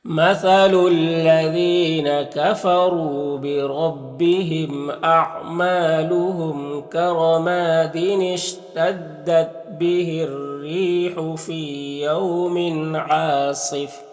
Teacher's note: رائے مشددہ کے نیچے زیر ہے تو را کو باریک پڑھیں گے · عین میں الف مدہ ہے، ایک الف کے برابر کھینچیں گے، صاد حروف مستعلیہ میں سے پر پڑھیں گے ، یہاں پر وقف کریں گے تو یہ تنوین سکون سے